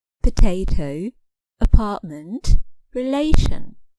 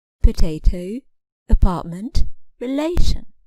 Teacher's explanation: it is clear that the middle syllable is stressed